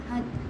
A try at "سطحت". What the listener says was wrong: سطحت ات نہیں حت سطحت